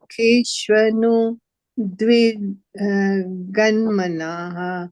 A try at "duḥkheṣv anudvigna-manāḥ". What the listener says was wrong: Dwigna, not gun, gna.